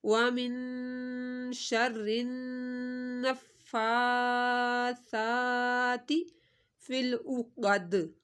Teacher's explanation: سا کو نرمی سے پڑھنا ہے اور تی کو لمبا نہیں کرنا، تا زیر تی۔